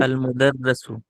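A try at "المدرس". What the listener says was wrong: Al-Mudarrisu. This is kasra, right? Al-Mudarrisu.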